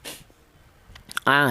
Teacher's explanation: Huruf ain ini keluarnya huruf berasal dari tenggorokan bagian tengah